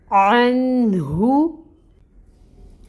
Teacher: نون ساکن ہے اور اس کے بعد حروف حلقی میں سے ہا آ رہا ہے تو نون کو ظاہر کریں گے یعنی اظہار ہوگا، ظاہر کر کے نون کو پڑھیں گے۔ اور ہا جو ہے یہ اقصاء الحلق سے ادا ہوگا، بھاری ہا ہے اور اس کے اوپر پیش کی حرکت ہے 1 کاؤنٹ، اس حرکت کو ادا کریں گے۔ · تو سٹریچ کرنا ہے ہم نے ما کو 2 کاؤنٹس کے برابر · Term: الف مد